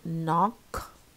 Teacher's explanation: the KN, it disappears, the K disappears